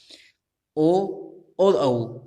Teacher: ओ और औ ये दो ऐसे वर्ण हैं जिन्हें बोलने के लिए कंठोष्ठ अर्थात कंठ और ओष्ठ दोनों का प्रयोग किया जाता है